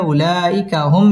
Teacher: মিম সাকিন ইজহারে খাস গুন্না ছাড়া পড়তে হবে